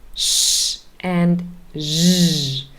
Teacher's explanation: those are very close to s and z, just a little bit further back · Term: post-alveolar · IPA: /ʃ/ ; and /ʒ/